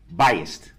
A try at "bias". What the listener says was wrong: No, bias. B-I-A-S. Not, there's no T at the end. Bias.